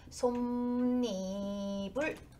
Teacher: 받침이로 끝나고 이로 시작하기 때문에 니은이 첨가돼서 솜니불 이렇게 발음이 되는 게 니은 첨가